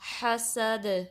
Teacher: جب دال پہ سٹاپ کریں گے تو کلکلا ہوگا، یعنی آواز آپ کی پلٹ کر واپس آئے گی